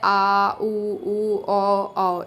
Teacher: इन स्वरों के उच्चारण में होठों का आकार गोल हो जाता है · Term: वृत्तमुखी स्वर